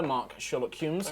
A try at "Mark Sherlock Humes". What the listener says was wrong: Don't roll your R's.